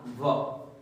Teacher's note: कैसा वर्ण है, दंतोष्ठ है। और बेटा ये अकेला ही ऐसा वर्ण है जो दंत और ओष्ठ की मदद से बोला जाता है, दो स्थानों से बोला जाता है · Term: दंतोष्ठ वर्ण